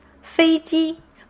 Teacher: both parts are in the first tone